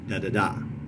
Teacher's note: the anapestic foot is unstress, unstress, stress